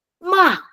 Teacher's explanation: And then fourth tone, it starts from high again, ma, and then going down.